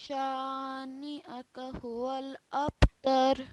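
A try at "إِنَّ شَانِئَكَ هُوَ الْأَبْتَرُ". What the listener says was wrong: Good. Well done.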